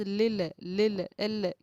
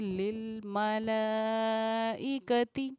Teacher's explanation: جب آپ لل کہیں تو اپنی زبان کو اوپر روک دیں، جب آپ ملائکتی کہیں گے تو اپنے آپ کی زبان نیچے آئے گی اور قلقلہ آٹومیٹک آپ کا رک جائے گا۔